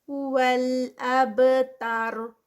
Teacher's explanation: با پہ کلکلا، تا لائٹ اور را پھر ہیوی